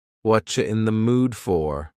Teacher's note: the word you has been reduced to Cha Cha this is extremely common in spoken English that the word